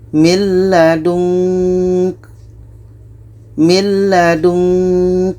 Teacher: Ketika kita baca nun, kita sudah merasakan huruf ka. Maka seperti ada bunyi eng. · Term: ikhfa hakiki